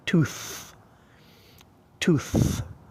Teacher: tooth, you've got an unvoiced TH